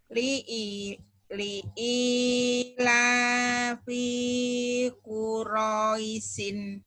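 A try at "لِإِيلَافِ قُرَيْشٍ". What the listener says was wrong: P-nya pendek. Yang panjangnya Bu, li i sama la. Udah itu doang. Yang lainnya pendek. Yang panjangnya ini sama ini.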